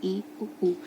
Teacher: ई और ऊ को जब हम बोलते हैं तो हमारा मुंह जो होता है वो बंद ही रहता है लगभग। जब आप बोल के देखिए ई ऊ, तो ज़्यादा हमारा मुंह इसमें खुला हुआ नहीं है। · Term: समृद्ध स्वर